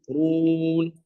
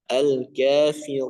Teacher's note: perhatikan sini huruf ra di pada kata al-kafirun ya, jangan masuk hidung